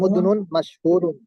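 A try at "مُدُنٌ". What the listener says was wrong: মুদনুন না, মুদনুন না, মিম পেশ মু, তারপরে দাল পেশ দু, মুদুনুন।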